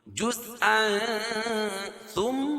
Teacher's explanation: جیم اور زا جزء. اور تنوین کے بعد حروف اخفاء کے 15 حرفوں میں سے تا ہے تو یہاں ناک میں آواز کو چھپا کر پڑھیں گے یا اخفاء حقیقی ہوگا.